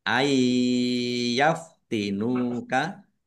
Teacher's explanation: Nun sukun bertemu dengan huruf ya. Bacaan idgam bununah masuk dengan mendengung. Yaitu mendengung ya ditandai yanya ada tasdidnya ditahan biar tampak dengungannya.